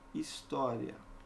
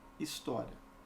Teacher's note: De acordo com essa segunda análise, eu tenho um hiato, ok? E a sílaba tônica é a antepenúltima. Então, eu tenho também uma proparoxítona.